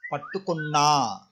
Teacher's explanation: Okay, so for all these verbs ending with nu, you can use same rule, that is pattu up to pattukon is same, then you need to emphasize, like pattukonna, you need to make double n sound, pattukonna, then a long vowel sound, then bring the ending sound from the personal pronoun.